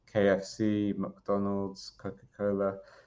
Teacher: brands that have an initial plosive, so a hard sound at the beginning, especially a k, or just in it, actually, not necessarily at the beginning, they're more memorable, I think, because it's a bit different, a bit unexpected.